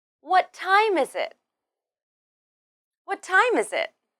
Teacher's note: in this question we stress what and time then use a falling intonation at the end